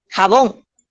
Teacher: sé que tiene su sílaba tónica en la última sílaba, que es la bon.